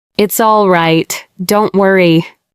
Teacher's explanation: A now serious tone with lower pitch.